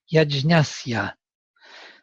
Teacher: it was the same pitch and then the voice fell